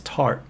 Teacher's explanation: you don't release the t at the end of words